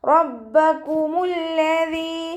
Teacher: ദാലിൻ്റെ മഖ്റജ് നമ്മുടെ നാവിൻ്റെ അറ്റവും മേലെ മുൻപല്ലിൻ്റെ അറ്റവും ചേർന്നിട്ടാണ് പുറപ്പെടുന്നത്.